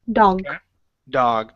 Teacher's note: when you said the word dog you added an extra vowel there